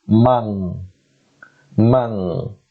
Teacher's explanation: But because tha comes after Noonus Saakinah, we have to change this, we have to pronounce this noon sound halfway, so we say mang, mang, and then we have to stretch the joining sound, so we say manthura.